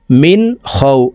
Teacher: واو زبر وا، همزة كرا زبر آ، وآ ميم زبر ما، نون زبرنا، وآمنا ها ميم بشهم، وآمنهم মিম নুন জের মিন, নুন সাকিনের পরে ইজহারের হরফ খ আসছে, এই কারণে এই নুন সাকিনকে গুন্না ছাড়া স্পষ্ট করিয়া পড়তে হবে